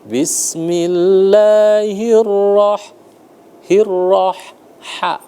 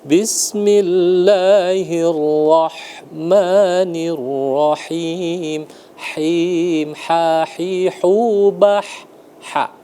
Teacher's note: Bismillahirrah hirrah ha dia ditenggorokan ya. Bismillahirrah dibuka tenggorokannya rongganya ya karena ha itu di pangkal tenggorokan.